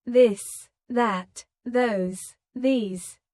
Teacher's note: the softer version of th where you let your tongue touch your teeth lightly but use your voice